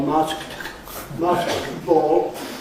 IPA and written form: ˈmɑːskt ˋbɔːl (masked ball)